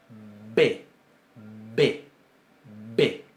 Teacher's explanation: Bien, la Bet con dagesh, con un puntito en el medio, que va a sonar bilabial, B, es oclusiva. Se cierra completamente el conducto bucal y se abre de golpe.